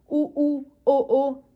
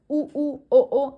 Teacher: आपके होठ क्या हो रहे हैं? गोल एक गोल सी शेप में आ रहे हैं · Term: वृत्तमुखी, वृत्तमुखी स्वर